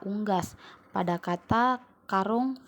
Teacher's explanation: vokal u tinggi atas belakang bundar